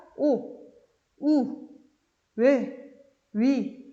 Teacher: 원순모음은 입을 동그랗게 해서 오리입처럼 내밀고 소리 내는 겁니다. 자, 원순모음이 되려면 입을 내밀어서 해야 되니까 오, 우, 왜, 위 이런 것이 원순모음이에요.